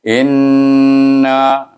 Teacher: Bunyinya in, bila nun bertasydid kita kena baca in itu dengan wajib guna dua harakah.